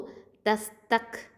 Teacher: இந்த க் அப்படின்னு ஒரு லைட்டாக ஒரு தெரிக்கிற மாதிரி சவுண்டு வரும்.